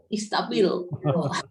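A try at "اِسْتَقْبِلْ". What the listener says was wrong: Istaqbil ada kopnya ya.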